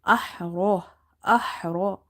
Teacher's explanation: Hamza, ha, fatah. Ha is from the middle of the throat. Ra is heavy because of having fatha on the top.